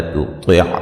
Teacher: طا کو موٹا ادا کریں گے، عین کو واضح نکالیں گے